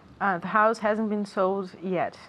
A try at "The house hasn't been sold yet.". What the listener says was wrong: Perfect. The house hasn't, good contraction,